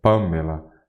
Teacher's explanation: Pâmela é uma proparoxítona como você já observa porque a antepenúltima sílaba é a mais forte